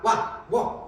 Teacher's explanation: 오하고 우 소리가 와, 워 라고 읽었을 때 짧게 나죠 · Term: 반모음 오우